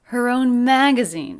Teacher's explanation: her and own, less stressed, a little flatter, leading up in pitch and energy to the stressed syllable mag.